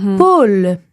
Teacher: donc un « ou » plus ouvert, donc « o », poule. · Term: l'ouverture des voyelles fermées